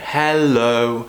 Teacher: are we have two syllables in the word hello hello right what we want to do is to show that we're a friendly person by doing this mixture of a rising falling tone hello and what that does is it just adds a friendliness